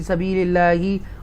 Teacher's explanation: اللہ کے نام سے پہلے زیر ہے تو ترقی کے ساتھ اللہ کو پڑھیں گے باریک